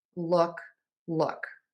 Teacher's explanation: The vowel in look, uh, is more relaxed. It is still made with slightly rounded lips, and it is going to be shorter. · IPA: /ʊ/